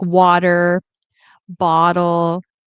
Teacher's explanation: well, this phenomenon is quite common, quite widespread, almost universally present in American English and in Canadian Mm, English too. yeah, So you have the sound being pronounced more quickly in an unstressed syllable. Sometimes we talk about flapping the T sound.